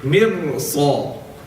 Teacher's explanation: So the ra is going to be read thick.